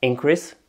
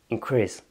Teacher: Par exemple, en anglais, pour dire augmentation, il va y avoir increase avec un accent tonique sur la première syllabe qui va être un nom, et increase qui va être sur la deuxième syllabe et qui va être un verbe